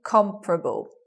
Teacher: the syllables in the word okay it becomes you anticipate comparable you anticipate four syllables but you get three comparable with the stress on the first · So the stress being on the first, this second vowel disappears there. Elision of schwa after the first stressed syllable.